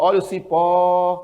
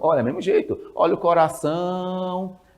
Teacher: quando você vai vender na feira você prolonga Justamente a sílaba tônica